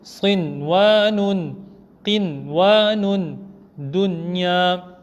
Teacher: On aurait dû faire idgham, mais comme ces deux lettres se sont retrouvées dans un seul mot, on ne fera pas idgham, mais on fera izhar, c'est-à-dire on lira sans ghunna